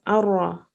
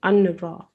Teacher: The noon doesn't come into play at all. You can't hear the noon at all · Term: idgham